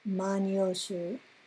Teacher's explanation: there's a syllabic nasal which has lost its vowel. It's romanized as n or occasionally m.